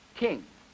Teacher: the initial phone in the T series or the T family also is aspirated and blows out